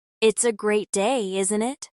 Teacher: The voice goes up at the end, showing you're inviting a response. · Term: friendly intonation